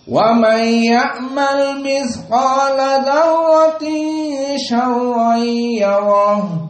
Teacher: Qiraah Hamzah tanpa gunnah.